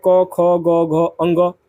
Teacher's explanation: कंठ से जो वर्ण का उच्चारण होता है उसमें आपका अ आ और क वर्ग जितने हैं क ख ग घ अ ङ और विसर्ग ये सभी जो वर्ण है ये सभी वर्ण और स्वर कंठ से बोले जाते हैं।